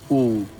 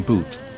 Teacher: like the oo, in boot. The lips round completely, creating a deep resonance chamber.